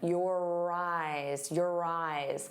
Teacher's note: notice how your and eyes link together. You're going to hear that R sound on both sides of the word if we link them. · the second word instead of eyes really sounds like rise because it has that r